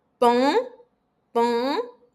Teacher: IN, UN, EN, AM, ON são sons nasais. Então, você vai sentir a vibração aqui em cima no seu nariz